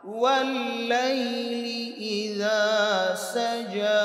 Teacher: লালের উচ্চারণ একদম পাতলা